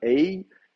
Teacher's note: Vous avez une diphtongue aï, vous pouvez soit la prononcer aï bien comme il faut, ou bien ei. Vous pouvez déjà évoluer vers une voyelle e mais en maintenant une mouillure